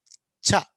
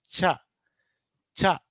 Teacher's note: ఛ అన్నప్పుడు గాలి ఒకటేసారి రాదు, ఫస్ట్ పూర్తిగా ఆపుతాం, వదిలేటప్పుడు మాత్రం ఫ్రిక్షన్గా వదులుతాం, సన్నగా వదులుతాం, పూర్తిగా ఆపి సన్నగా వదులుతాం.